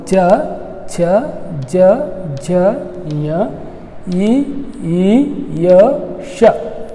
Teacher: ನಂತರ ತಾಲವ್ಯ ಅಕ್ಷರಗಳು ಅಂತಂದರೆ ಈ ನಮ್ಮ ಮೇಲ್ಭಾಗದೊಳಗೆ ಅಂಗಳ ಏನಿದೆ, ಅಂಗಳದ ಮುಂದಿನ ಭಾಗದೊಳಗೆ ಮುಂದಿನ ಭಾಗದೊಳಗೆ ಉಚ್ಚರಿಸಲ್ಪಡುವಂಥ ಅಕ್ಷರಗಳು ತಾಲವ್ಯ ಅಕ್ಷರಗಳು